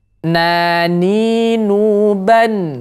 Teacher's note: Nun ketika dia sukun maka salah satu sifatnya itu ada tawasuth ya ada aliran sedikit